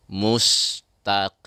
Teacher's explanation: Jangan lupa dalam huruf qaf ya, qafnya tebal walaupun dia berbaris kasrah ya, qaf tetap dibaca tebal